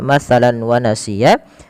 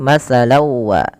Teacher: nunnya diganti dengan wau sehingga masuk yaitu kita kenal dengan istilah idgham. Bighunna artinya disertai dengan penahanan atau masukkan ke rongga hidung kita.